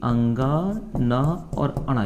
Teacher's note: प्रत्येक वर्ग के जो पंचम वर्ण है उसका उच्चारण कहां से होता है जी नाक से होता है